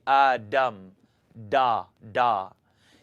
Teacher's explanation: make the dal into a d and your tongue is going to kind of curl up and hit the top of your mouth